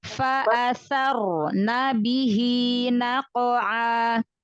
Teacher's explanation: Fa-nya tambahkan lagi sifat hamznya ya.